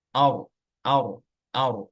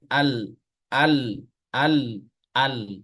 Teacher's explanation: kalau ro dia dinaikkan ke atas ro atau ar ar ar sedangkan Al dimerengkan ke kanan atau ke kiri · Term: inhiraf